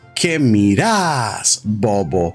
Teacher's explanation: the second syllable of miras is emphasized